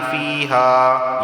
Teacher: یا سے پہلے زیر ہے تو اسے ایک الف کے برابر کھینچ کر پڑھا جائے گا